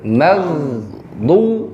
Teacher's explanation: Jadi jangan sampai memantulkan di ghain teman-teman, suaranya berjalan. Mag dan tebal.